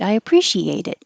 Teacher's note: the T will change to a d and connect